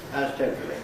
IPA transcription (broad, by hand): ˋtemprəli